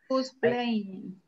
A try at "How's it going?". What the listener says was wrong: Yeah, aquí tiene un problemita en el linking. How's it going? How's it going? How's it going?